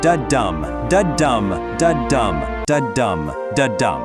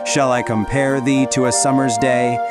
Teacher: Every single line [music] in Sonnet 18 has exactly 10 syllables arranged in five pairs. Each pair is an unstressed syllable followed by a stressed one. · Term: iambic pentameter